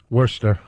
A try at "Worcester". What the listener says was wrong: Then take the R out.